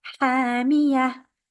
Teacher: Ha, 2 counts longer because of the alif. · And ta marbuta, we are stopping on that, is the end of the verse. We change the ta marbuta into a ha.